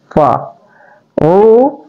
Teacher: fa keluar di syafatain, ya, dua bibir